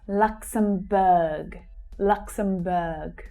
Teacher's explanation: So that last syllable there, is pronounced - the vowel sound is pronounced /ɜː/ as in 'her'.